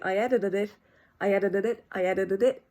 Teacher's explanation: you're just tapping your tongue it's called a tap off the alveolar Ridge